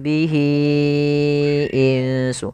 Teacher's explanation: mad silah tawilah, yaitu panjangnya kita memanjangkan sepanjang 4 harokat